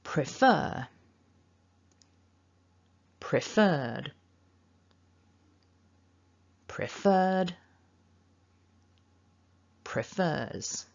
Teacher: the second syllable is the stressed syllable you can see from that mark at the top in the